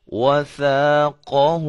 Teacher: یہ ثا ہے، اس کے اندر سیٹی کی آواز نہیں پیدا ہونی چاہیے